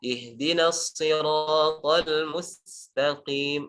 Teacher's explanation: Intinya huruf sin di sini ditipiskan. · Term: sin tipis